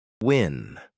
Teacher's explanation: Start with rounded lips, like U, then quickly open into the vowel.